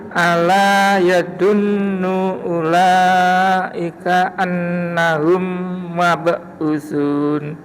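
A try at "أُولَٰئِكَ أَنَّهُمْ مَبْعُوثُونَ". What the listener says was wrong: Punya panjang, humnya dengung, ulanya kurang panjang Mbak. Ulaika annahum mab'usun.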